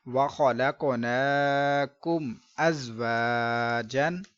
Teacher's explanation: میم ساکن کے بعد حمزہ ہے، با اور میم نہیں ہے، لہذا ہم نے گنہ نہیں کرنا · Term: اظہار شفوی